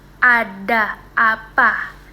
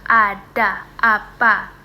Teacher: Nah, mulutnya itu lebih terbuka ada apa. Lidahnya itu berada di posisi paling bawah dan mulut terbuka lebar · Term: vokal rendah bawah tengah